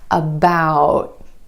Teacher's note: Instead of that true T at the end, most Americans are going to hold that T about. My tongue tip goes to the ridge behind my teeth and just stays there. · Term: held T